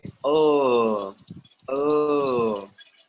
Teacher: If you put your fingers right here, or in this little bone behind your ear, and you say, oh, oh, you will notice that your throat vibrates. Your vocal cords vibrate.